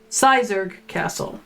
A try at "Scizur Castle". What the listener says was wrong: The gh is silent.